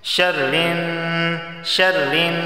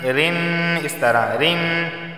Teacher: شرن یہاں بھی دیکھیں نون پر تشدید ہے، غنہ ہوگا